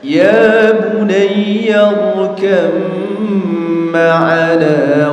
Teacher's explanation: Ba-nya dimasukkan ke huruf mim